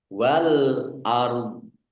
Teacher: Wal ard, alif lam komariah ditandai lamnya dibaca sukun. Kemudian ro-nya sukun, do-nya juga sukun karena wakof. Maka dibaca antara ro dan do.